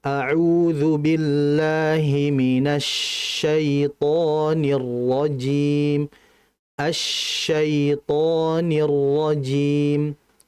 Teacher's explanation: shinnya itu ditahan lagi karena shin dalam kondisi bertasydid, kemudian dia memiliki sifat tafasyi, jadi ditahan.